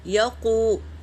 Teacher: دیکھو، یا زبر یا اور قوف واو پیش قو، یا قو، یا کو ہم جلدی پڑھے اور قو کو کھینچے، کیونکہ واو مدہ ہے، یہ واو ساکن سے پہلے پیش ہے، واو مدہ ہے یہاں پر۔